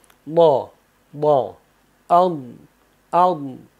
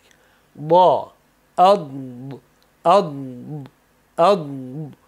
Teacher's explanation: Doning talaffuzida dimoq yo'li berk bo'lishi kerak, u dimoqsiz tiniq aytilishi kerak.